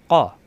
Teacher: কফ জবর ক জিহ্বার গোড়া থেকে উচ্চারণ